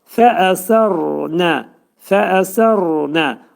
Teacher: Qalın deyirik və dilimiz üst dişin altındakı ətə dəyir.